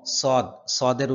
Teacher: সদের উচ্চারণ হয় মোটা, সিনের উচ্চারণ হয় পাতলা। হ্যাঁ, যেহেতু এখানে সদ এসেছে আমরা কিছুটা মোটা উচ্চারণ করতে হবে।